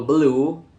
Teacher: Number 1, blue to blue. A vowel is inserted to break up the consonant cluster bl, making pronunciation easier. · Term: epenthesis